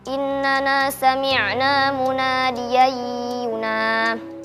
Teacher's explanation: Hukumnya idgham bi gunnah karena fathatain bertemu dengan huruf ya dibaca dengung.